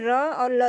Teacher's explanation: र और ल दंत मूल होते हैं, दंत मूल जो कि दांत के मूल से इनका उच्चारण होता है